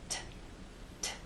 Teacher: down there's a puff of air a release of air T you can feel that puff of air if you put your hand in front of your lips